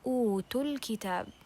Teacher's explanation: we skip the mad letter, okay, and don't read it and connect it to the next word or the second word.